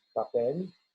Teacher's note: Si digo papel, no se mueve. Papel, la primera P en español no tiene ese soplo de aire. Y eso se llama en términos técnicos voice onset time.